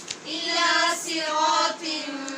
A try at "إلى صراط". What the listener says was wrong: را کی آواز آپ کی ٹھیک نہیں آ رہی، آپ پڑھ رہے ہیں صراطم صراطم. را میں جو ٹکرانے کی آواز ہے، جو مشابہت تقریر ہے، اس کی آواز آنی چاہیے صرا صرا. إلى صراط